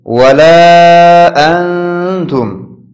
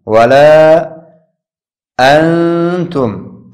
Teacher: این مد منفصل به اندازه 3 الف در وقت تلفظ کش کرده میشه.